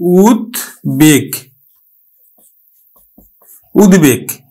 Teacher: উৎ উপসর্গযোগে গঠিত শব্দ ব ফালার উচ্চারণ বজায় থাকবে অর্থাৎ ব ফালার উচ্চারণ হবে সন্ধিতে ব ফালার উচ্চারণ হবে অর্থাৎ